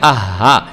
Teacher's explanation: हा की जो आवाज़ है वो अपने सीने से हल्क से अदा करनी होती है, इसलिए इसको मोटा करके पढ़ना है। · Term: हरूफ हलकी